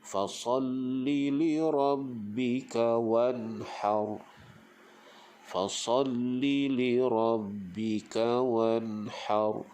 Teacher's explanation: izhar halqi kita baca dia tanpa dengung